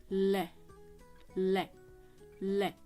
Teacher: बार बार बोल के देखो, यानी कि आपके मुख से साइड से हवा बाहर निकल जाती है जब हम इसका उच्चारण करते हैं। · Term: पार्श्विक व्यंजन